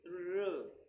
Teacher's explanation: the active articulator is the tip of the tongue and the passive articulator is the rear of the alveoli. The rear means the back of the teeth ridge. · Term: post alveolar